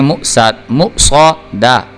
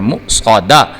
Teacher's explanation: اب دیکھیں، میم پیش حمزہ مو، صاد زبر صو، صاد جو ہے یہ حروف مستعلیہ میں سے ہے، اس کو پر کر کے پڑھنا ہے، جبکہ دال جو ہے یہ حروف قلقلہ میں سے ہے، اس کو ابھار کے پڑھنا ہے۔